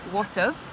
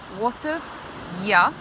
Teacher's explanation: we push the words together, so we make a contraction, and we say, what of, with the have becoming a f sound